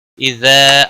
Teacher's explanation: اذا الف مدہ ہے، 1 الف کے برابر کھینچ کر پڑھیں گے، زال نرمی والا ہے۔